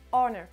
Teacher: pour l'accentuation ça se fait aussi comme sur les autres mots sur la première syllabe